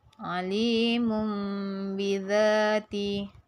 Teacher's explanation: menukarkan bunyi nun mati dan tanwin kepada bunyi ba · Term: Iqlab